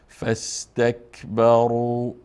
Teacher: الف نطق نمیشه مستقیما، حرکت ف فتحه را با سین چی میکنیم؟ میچسبانیم و وصل میکنیم. فاستکبروا برو برو فاستکبروا نمیخوانیم، بره پر نمیخوانیم، به باری خوانده میشه.